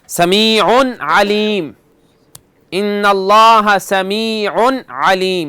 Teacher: اس لیے کہ تنوین کے بعد کیا ہے؟ عین, اور عین حرف حلقی ہے, حروف حلقیہ میں سے ہے, تو اس لیے یہاں غنہ نہیں کریں گے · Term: اظہار